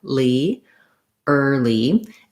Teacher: basically i just have a vowel r a light l and a tense e sound early first syllable stress in that word as well so the